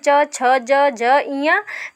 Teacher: ये बोले जाते हैं तालु से